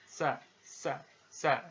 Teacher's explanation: ketika mengucapkan huruf tsa ada suara tambahan yang menyerupai dengan suara belalang · diucapkan dengan ujung lidah berada di antara dua gigi seri kita